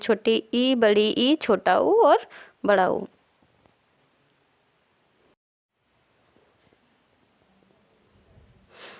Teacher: जिन स्वरों के उच्चारण में मुख कम खुले उसे संवृत स्वर कहते हैं